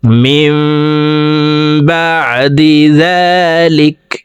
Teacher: নুন সাকিনের পর ইকলাবের হরফ বা একটি বা আসছে, এই কারণে এই মিম দ্বারা পরিবর্তন করিয়া গুন্নার সহিত পড়ব। অর্থাৎ এই জেরওয়ালা মিমটি এই ছোট্ট মিমের সাথে গুন্নার সহিত পড়তে হবে, এই নুন বাদ পড়ে যাবে। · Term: ইকলাব গুন্নাহ